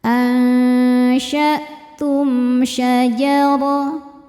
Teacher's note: Ansyatum. Lalu ada izhar syafawi karena mim sukun tidak menghadapi mim atau ba melainkan menghadapi shin. Cara bacanya mim dibaca jelas.